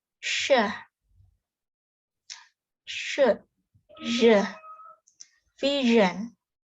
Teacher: Air is forced through the tongues and point just beyond alveolar ridge. It is post-alveolar.